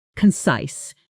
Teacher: The stress is on the second syllable and that size part rhymes with nice.